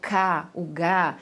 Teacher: A língua para trás, ela vai formar o cá, o gá.